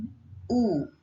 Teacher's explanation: kita ngomong U, itu terasa lidah bagian yang belakang atau fusolmon itu bertemu dengan langit-langit gitu kan. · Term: vokal belakang